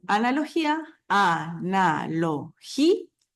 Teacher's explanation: ahí la vocal acentuada es la i y no la a entonces ahí se forma o se produce el iato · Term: hiato